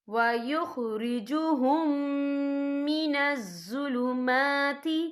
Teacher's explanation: یہدی بہ اللہ من اتبع رضوانہ سبل السلام وَيُخْرِجُهُم مِّنَ الظُّلُمَاتِ، یا دیکھیں وَيُخْرِجُهُم، یہاں میم ساکن ہے، میم ساکن کے بعد جو ہے میم مشدد والا حرف آ رہا ہے، تو یہاں پر ادغام شفیع ہوگا۔ ہم پچھلے میم کو اگلے میم میں مدغم کریں گے اور ہم یہاں غنہ بھی کریں گے۔